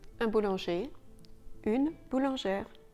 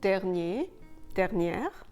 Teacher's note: If you turn these words into feminine words, then you'll add an E after the R, and the R will then be sounded.